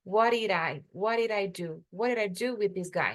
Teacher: T e D juntos vira uma coisa só. Ele juntou. Fica uma palavra só.